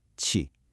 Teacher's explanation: The correct third tone has that little dip in the middle